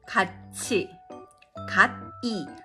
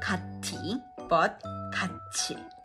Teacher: 디귿 or 티귿 followed by e vowel becomes 지읒 or 치읒.